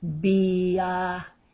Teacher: The V as in Victor and the B as in baby are pronounced exactly the same as a B sound.